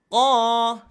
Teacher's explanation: huruf tebal pangkal lidah terangkat